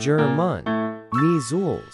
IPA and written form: ˈdʒɜːmən ˈmiːzlz (German Measles)